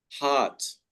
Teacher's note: So it's a long vowel, heart, just like the word art, hard, but we do not say hurt.